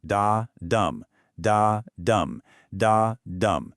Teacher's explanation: An iambic is a metrical foot, a rhythmic unit basically, consisting of 2 syllables, an unstressed syllable followed by a stressed one